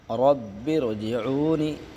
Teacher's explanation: را ساکنہ سے پہلے زیر ہو تو را باریک ہوگی۔ تو اس کا اجرا کریں گے کہ را ساکنہ سے پہلے زیر ہے، را ساکنہ باریک ہوگی، مطلب پتلا کر کے پڑھیں گے، پتلا۔